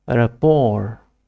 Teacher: It is pronounced rapport. The last letter T is silent and the stress is on the second syllable.